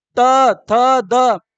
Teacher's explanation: त वर्ग की बात करें तो त वर्ग जब आपका जो दांत है वो जीभ को दबाएगा तब निकलेगा आवाज